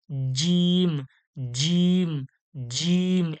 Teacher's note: জিম শক্ত ও কঠিন আওয়াজে জীবের মাঝখান থেকে জীবের মাঝখানে এবং সরাসরি তালু থেকে